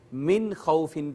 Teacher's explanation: فقط نون کو ظاہر کریں گے، آواز چھپائے بغیر آگے چلے جائیں گے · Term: اظہار